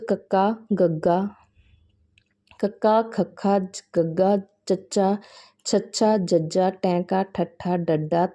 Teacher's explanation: ਇਹਨਾਂ ਦਾ ਉਚਾਰਨ ਕਰਦਿਆਂ ਸਾਹ ਦੀ ਹਵਾ ਨੂੰ ਪੂਰੀ ਤਰ੍ਹਾਂ ਰੋਕ ਕੇ ਫਿਰ ਇੱਕਦਮ ਛੱਡਿਆ ਜਾਂਦਾ ਹੈ। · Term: ਡਕਮੇ ਵਿਅੰਜਨ